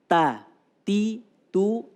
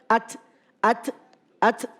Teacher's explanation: posisi ujung lidah ada di tempat daging dimana tumbuhnya gigi seri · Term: huruf Ta